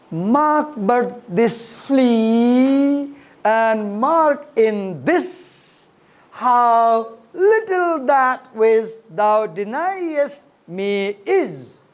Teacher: I put extra stress on the word flea, on the word this, on the word little, on the word deniest, on the word is.